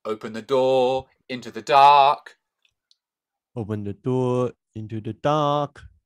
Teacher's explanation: on the word door just keep it straight and open the door don't don't pronounce the r at the end